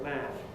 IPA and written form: mæəf (mouth)